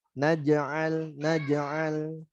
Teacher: Nah, yang mantul huruf jimnya. Naj'al, naj'al. Tipis semuanya hurufnya, jangan sampai jadi menebal.